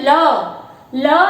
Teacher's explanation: तो पार्श्विक ध्वनि का उच्चारण करते समय हमारे मुख के भीतर दो अंगों के, दो अवयवों के मिलने से वायु जब रुक जाती है और जीवा के ऊपर उठने के कारण वायु जो है जीवा के दोनों तरफ से बाहर निकलती है, तब पार्श्विक ध्वनि उत्पन्न होती है।